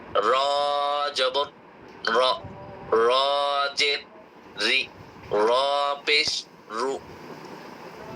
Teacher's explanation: জিহ্বার আগার পিঠ তার বরাবর উপরে তালুর সাথে লাগিয়ে র অক্ষরটি মোটা করে উচ্চারণ করতে হয়।